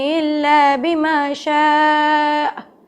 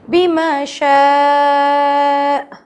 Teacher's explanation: شاء کو کھینچا اور آ پہ جھٹکا دیا. ہم میں سے بہت سے لوگ آ پڑھتے ہی نہیں ہیں، بما شاء ختم، نو، شین کو باقاعدہ کھینچیں گے، بما شاء، پھر آخر میں کا جھٹکا دے کر پھر رک دیں گے.